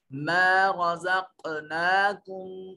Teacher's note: नून साकिन के बाद तो हरूफ इख्फा में से यहाँ इख्फा करेंगे। रज़ा क़ाफ पर आवाज जो है अपने मखरज से लग कर टकरा कर वापस पलटेगी, यहाँ कलकला वाजिब है।